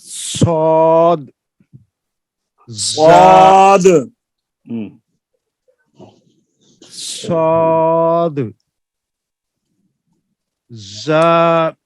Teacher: ان کے ادا کے وقت ایک آواز تیز مثل سیٹی کے نکلتی ہے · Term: سفیر